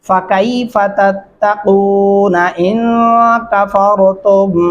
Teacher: را کو موٹا اور پر کر کے پڑھیں گے اور غنہ کریں گے یہاں پہ.